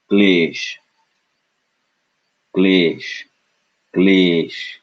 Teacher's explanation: a non aspirated K followed by Le